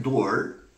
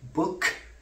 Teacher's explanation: in door the last consonant is voiced while in book The Last consonant is voiceless